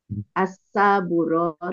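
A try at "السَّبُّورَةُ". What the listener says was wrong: Sinnya jangan panjang, sinnya jangan panjang, Bu. Sinnya jangan panjang.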